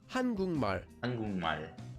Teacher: And the next syllable after that, 발, starts with the consonant mium. So we change the sound of the kiok at the bottom of kuk into an iang, and that syllable becomes kung